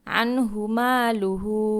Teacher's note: মা টান হবে এক আলিফ